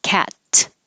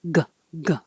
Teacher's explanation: cat, no vibration in the throat. You hear it, but you don't feel the throat.